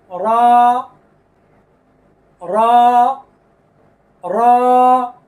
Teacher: জিহ্বার আগার পিঠ এই যে দেখেন এই হলো জিহ্বার আগা তার পিঠ তার বরাবর উপরের তালুর সঙ্গে লাগবে